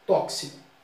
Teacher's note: em situação formal, o X aqui tem um som de KS